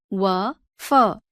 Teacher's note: दंतोष्ठ्य निचले होठ व ऊपरी दांतों से